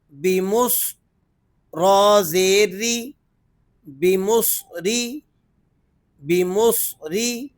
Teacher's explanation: صاد حروف مستعلیہ میں سے ہے، اس کو آپ نے پر کر کے ادا کرنا ہے